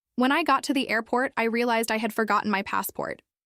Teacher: You'll notice a short pause after airport because that's where the thought changes. Without the pause, the sentence becomes harder to process.